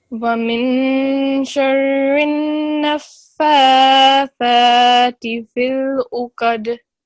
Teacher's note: It has a shadda, which means that, like I explained to the other student down here as well, these noon with a shadda on top means that we have to make a 2-second nasalization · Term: noon mushaddad